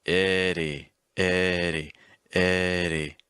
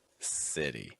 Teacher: Then we can add a fast D sound in the middle.